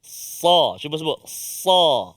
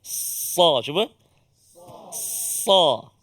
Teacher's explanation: Hujung lidah ditolak ataupun ke bawah hujung lidah kita, ke bahagian gigi hadapan kita, kan, dekat pangkal gigi, ataupun kita kata menghampiri pangkal gigi bawah, bahagian hadapan. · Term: huruf sad